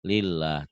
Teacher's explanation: Lafaz Allah tipis kalau sebelumnya baris di bawah.